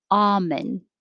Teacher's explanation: the most common according to merriam-webster was ah no l